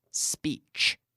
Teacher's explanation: be careful that you don't put an unnecessary vowel in front of the S in the word speech. Remember, the S sound comes from the mouth, blowing through the teeth, not in the vocal cords.